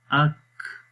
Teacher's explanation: حمزہ کاف زبر اک، تو اس میں سانس آخر میں جاری ہو رہا ہے، اور اگر ہم خالی زبر زیر کے ساتھ پڑھیں تو کاف، تو اس میں اتنا واضح نہیں ہے، لیکن پھر بھی صفت موجود رہتی ہے لیکن واضح نہیں ہے۔